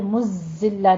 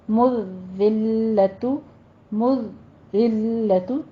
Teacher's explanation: مذلۃ، مذلۃ زال پہ مزلہ نہیں کہنا، سیٹی کی آواز نہیں آنی چاہیے، زال نرمی سے پڑھنا ہے. مذلۃ، مذلۃ تھوڑا سا رک کے سختی کر کے پھر آگے چلنا ہے.